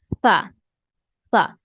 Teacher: جب ہم ثا پروناؤنس کرتے ہیں تو ہماری زبان کی نوک جو ہے ہلکی سی دونوں دانتوں کے درمیان سے باہر آتی ہے